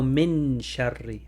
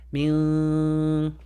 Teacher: But since we're applying the rule, it's how you were trying to read it, which is min. The N is muted, your tongue is floating, and you're preparing your mouth to say the sheen.